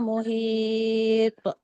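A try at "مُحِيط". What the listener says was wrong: dia punya qalqalah tu tebal Muhita.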